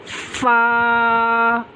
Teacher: اوپر والے دانتوں کا سیرا اور نیچے کے ہونٹ کا اندرونی حصہ، اس سے فا ادا ہوتی ہے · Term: حروف شفویہ